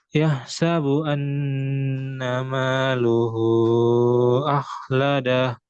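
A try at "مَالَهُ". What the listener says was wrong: Lahu. Bukan luhu.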